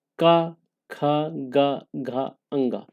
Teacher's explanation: का वर्ग में आप देख रहे हैं का, खा, गा, घा, अंगा, इनका उच्चारण कंठ से होता है